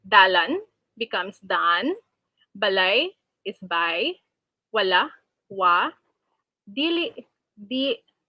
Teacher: an intervocalic L is deleted between the same vowel. Afterwards, one of the two vowels is also deleted. In turn, compensatory lengthening occurs to fill the space for deleted segments.